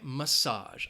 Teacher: And that first syllable has that schwa, massage, massage.